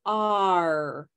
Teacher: This is a vowel sound, which means it's a sound we make without touching the tongue or the teeth or the lips to any other part of the mouth. So it's an open sound, like all the vowels. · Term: R sound